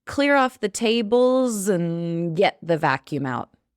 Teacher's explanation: Clear and get, the word and in the middle becomes an n.